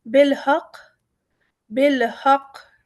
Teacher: بالحق، بالحق، یہاں پر اگر ہم لا کو لیتے ہیں تو بالحقی، اور اگر ہم لا نہیں لیتے تو بالحق، ٹھیک ہے، لیکن ہم نے کیونکہ تشدید ہے ہم اسے وزن بھی دیں گے، قاف کو قلقلہ بھی کریں گے لیکن ٹھہر بھی جائیں گے